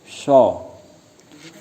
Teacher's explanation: Yang ke-16 sho. Makharijul hurufnya bertempat pada ujung lidah mendekat di antara gigi depan atas bawah